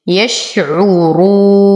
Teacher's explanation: أصبر على الشين أعطيها التفشي. يشعرون وتم ضمة العين والراء نقف على النون بالبينية ونعطي العرض للسكون حقه.